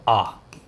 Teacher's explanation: आ जब बोलते हैं तो मुंह पूरा खुलता है, आ पूरा मुंह खुलता है। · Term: विवृत्त